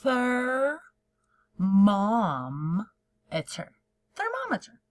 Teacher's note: Your tongue has to touch your teeth to say that TH sound at the beginning.